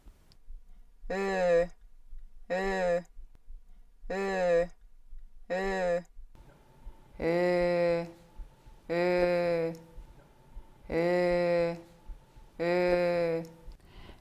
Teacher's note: Estonian Ö is a close mid-rounded front vowel. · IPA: /ø/